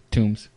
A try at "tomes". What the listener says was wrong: Tomes. It's not a tomb, it's a tome.